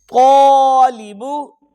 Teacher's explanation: طا کو پر کیا، الف پر ہو گیا